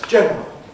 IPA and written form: ˈʤenrəl (general)